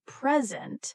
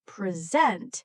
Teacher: For example, the word present can mean two different things depending on stress. If we stress the first part present, it means a gift. But if we stress the second part present, it means to give a talk.